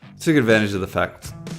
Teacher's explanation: With the word take the diphthong sound smooths down from /eɪ/ to a /ə/ and becomes /tək/